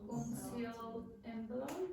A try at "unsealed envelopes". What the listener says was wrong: She said unseal envelopes. But that's not the consonant sound that is required. This is in the past. Unsealed envelopes. Now, is not pronouncing this word. She's saying unseal.